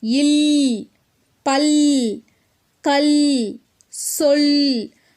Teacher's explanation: இது மேல்வாய் பல்லினுடைய அடியை நாக்கின் ஓரங்கள் தடித்து நெருங்குவதால் பிறக்குது